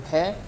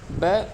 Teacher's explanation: भै तो ये जो है ओष्ठ महाप्राण घोष है, बै ओष्ठ अल्पप्राण घोष वर्ण है